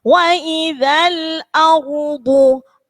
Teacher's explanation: Wa idzal tebal. Wa idzal namanya ro yang dibaca tafhim. Artinya ro-nya harus ditebalkan. Wa idzal ardu ro-nya tebal, bo-nya juga huruf tebal.